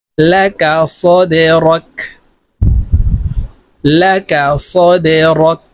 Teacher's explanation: এই দাল কলকলার হরফ নিচের দিকে ধাবিত করে ধাক্কা দিয়ে উচ্চারণ করতে হবে।